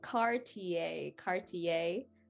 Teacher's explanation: that i e r turns into a very light a y sound